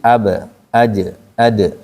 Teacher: Kata para ulama, bunyi pantulan itu mendekati fathah. Jadi kalau ba ja da berarti ab aj ke situ. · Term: qalqalah